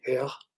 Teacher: the R is produced sometimes with a little bit of voiceless energy, hair, sometimes with none.